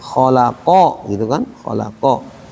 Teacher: Ini da kalau dikasih fathah da. Kalau tebal saat dikasih fathah bunyinya O.